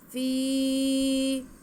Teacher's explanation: फा को आवाज़ को हम एक अलिफ के बराबर खींच के पढ़ेंगे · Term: या मद्दा